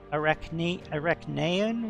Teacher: the emphasis is definitely on the center second syllable